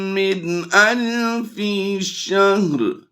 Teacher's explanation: نون ساکن کے بعد حروف حلقی میں سے حمزہ آ گیا، تو ہم یہاں پر کیا کریں گے، بغیر غنہ کے پڑھیں گے، اسے اظہار کہتے ہیں۔